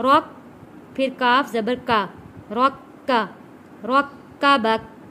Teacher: خلقک، الذی خلقک، فسواک، فسواک، فعدلک، فعدلک، الذی خلقک فسواک فعدلک، فی ای صورت فی ای صورت ما شاء رکبک۔ کاف کے اوپر تشدید ہے، را کو جوڑیں گے کاف کے ساتھ